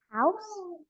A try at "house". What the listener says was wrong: You went house, house. So pronounce the H.